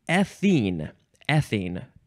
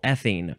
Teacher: emphasize that first syllable